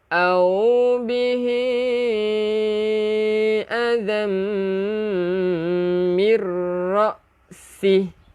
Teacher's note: tanwin bertemu dengan mim, hukumnya idgham bi gunnah, memasukkan beserta dengung